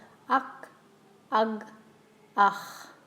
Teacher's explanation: you actually can't feel the vibration anymore if you say the sound h